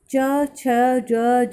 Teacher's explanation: तालव या तालू से निकलने वाले व्यंजन है